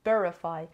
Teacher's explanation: Verify has 3 syllables and the stress is on the first syllable.